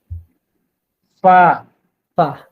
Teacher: নিচের ঠোঁট, আর সামনের উপরে যে বড় দুইটা দাঁত আমরা হাসলেই আগে উঁকি মেরে বের হয়, এই দুই দাঁতের আগার সাথে লাগে উচ্চারিত হবে পা।